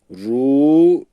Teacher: ra harfi kalın olduğu için rü demiyoruz ü sesiyle okunmuyor u sesiyle okunuyor